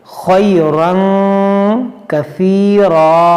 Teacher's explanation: یہ خا حروف مشتعلیہ ہے، اس کو موٹا کریں گے، خیرن کثیرا، اور یہاں پر یہ الف کو ہم نہیں پڑھیں گے، اور یہاں پر ہم وقف مطلق ہے، رکیں گے تو اس دو زبر کو ہم الف سے بدلیں گے کثیرا۔